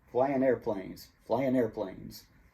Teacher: we take out the g and the following word begins with a vowel you're not connecting the g to the next word you're connecting you're linking the n to the next word